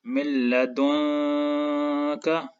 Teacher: نون ساکن لام کے ساتھ شد کی وجہ سے جڑا ہوا ہے تو ادغام ہوگا. اور جیسے کہ نون ساکن کے بعد لام ہے تو ادغام کے ساتھ غنہ نہیں ہوگا.